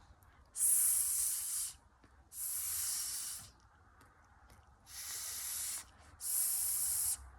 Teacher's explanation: S and Z sounds are both made the same way. It's with the tip of the tongue at the top of your mouth. It's right behind your teeth. Alveolar ridge.